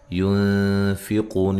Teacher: یہاں نون ساکن کا اخفا مع الغنہ ہے، باریک اخفا ہے، قو و مدہ ہے، تو وقف کی صورت میں مد کر سکتے ہیں، ٹھیک ہے جی، نون ساکن ہو جائے گی، وقف کی صورت میں مد کر سکتے ہیں۔